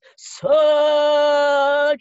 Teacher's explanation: you've got a huge low vowel sound, which brings all the powerful destructive energy into the poem